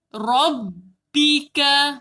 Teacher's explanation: Tak nak rabbika, kena rabbika. Ba 2 bibir, makhraj dia 2 bibir dirapatkan secara berat. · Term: huruf bersabdu